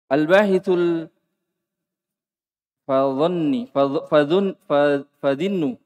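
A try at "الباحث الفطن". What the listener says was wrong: Ada titiknya di to. Biasa, nunnya biasa. Al-bahithul fatinu.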